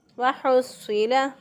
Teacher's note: हा जो है इसको वस्ते हलक से अदा करेंगे।